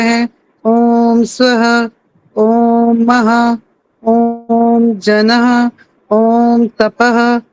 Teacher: विसर्ग की ध्वनि भी आ रही थी आधे है की आधी मात्रा के साथ है की ध्वनि आ रही थी